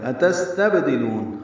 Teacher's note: سین ساکن ہے، سانس جاری رہے گی اس کے پڑھتے ہوئے، با ساکن ہے، اس پہ قلقلہ ہوگا، لو واو مدہ ہے، نون کو الذی کے لام سے ملا دیں گے، ذی یا مدہ ہے، 2 حرکات لمبا ہے۔